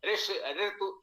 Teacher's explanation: और ये स्वर मूर्धन्य है अर्थात मूर्धा से इसका उच्चारण होता है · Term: मूर्धन्य स्वर